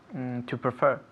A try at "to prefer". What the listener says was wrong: Perfect. Muy bien. Repeat again.